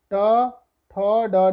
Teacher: ऋटुरषाणाम मूर्धा, तो आप देखेंगे मूर्धा मीन्स क्राउन, मुख के ऊपरी हिस्सा जो होता है, जहाँ जीभ लगा के शा बोलते समय, शा का उच्चारण करते समय जहाँ पे जाके जीभ टकराती है उसको हम मूर्धा बोलते हैं